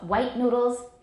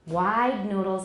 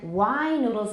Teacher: And then wine noodles is even longer than wide noodles because it's an open syllable. So we have 3 different lengths depending on what comes after the diphthong. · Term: length of the vowel